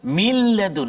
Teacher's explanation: bunyi nun tu ke dalam lam tu masuk kedua-duanya, zat dan juga sifat, komplit masuk dia, sempurna masuk dia, kan? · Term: idgham kamil